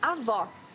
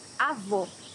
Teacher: It should be an open O, as we say in Portuguese.